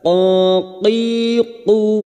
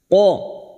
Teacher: huruf qaf ini huruf isti'la, huruf tebal